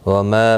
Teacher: ما الف مدہ ہے، ایک الف کی مقدار کے برابر کھینچ کر پڑھا جائے گا